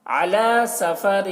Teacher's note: علی عین کو حلق سے ادا کریں گے